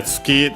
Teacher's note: Tsuki, the one already mentioned for moon. Accent on the last mora. So actually, when followed by the possessive particle no, it becomes an accent because that's the rule of the possessive particle no.